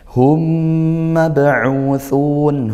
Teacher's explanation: Ini idgham mli atau idgham mlain bisa disebut seperti itu. Nah, dibaca masuk dan juga dengung ya karena huruf yang sama dan hurufnya mim. Hurufnya mim maka kalau mim ditasydidkan dia gun ghunah.